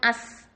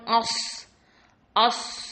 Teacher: ஆனா சீன் வந்து light letter, சாது வந்து ஹெவி லெட்டர்